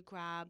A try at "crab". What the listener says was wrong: You want to say crab, you know, you say crab. Like you put a P in a crab. Crap. You say boy, you know, crab.